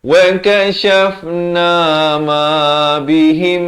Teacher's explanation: Di sini mim mati bila bertemu mim, hukumnya idgham mislan saghir, kena dengung 2 harakat.